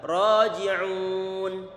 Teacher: Ra tebal dimatkan, kemudian ji kita tarik bibir kita, raji'un.